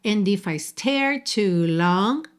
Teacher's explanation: você juntou pelo N, tá? O D sumiu.